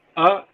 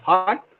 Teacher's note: ah as in heart is a central unrounded vowel between open and half open position